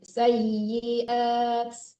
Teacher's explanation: i-nya dijelaskan, jangan sayiat. Sayiat kayak mati, ya-nya tasdid.